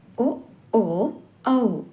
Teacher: ಅಕ್ಷರಗಳು ಕಂಠ ಮತ್ತು ತುಟಿ ಓಷ್ಠಿಯ ಗಳೆರಡರ ಸಹಾಯದಿಂದ ಹುಟ್ಟುತ್ತವಾದ್ದರಿಂದ ಇವು ಕಂಠೋಷ್ಟಿಯ ವರ್ಣಗಳೆನಿಸುವವು